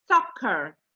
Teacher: It's not a sh sound, it's a s sound. Your teeth on top of each other.